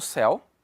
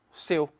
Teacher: E quando eu pronuncio esta palavrinha aqui, a pronúncia é fechada. Então, sim, é uma monossílaba, sim, é um ditongo, mas não tem pronúncia aberta